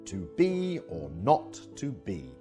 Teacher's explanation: the first syllable is unstressed and the second is stressed as in to be or not to be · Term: i am